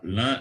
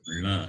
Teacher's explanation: here you can note it is with Chandra Bindu, La, nasalized Lakara. Just know it as nasalized Lakara.